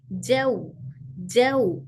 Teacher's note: जौ पूरा हर्फ वाव पूरी तरह से अदा हो जैसे जौ पढ़ते व में होठ पूरे गोल हो